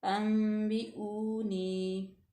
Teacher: इफ़ा का कायदा लागू हो रहा है तो इसको हम थोड़ा सा गुना पैदा करेंगे।